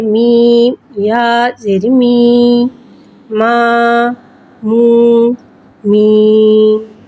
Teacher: یا ساکن سے پہلے زیر آ رہا ہے، یا مدہ ہو رہا ہے، لہذا یا مدہ کو ایک الف یعنی 2 حرکات کے برابر کھینچ کے پڑھیں گے اور زیر کو نیچے گراتے ہوئے ادا کریں گے۔